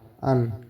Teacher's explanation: अन का उच्चारण स्थान नासिक यानी नाक है। घोष है अल्पप्राण है।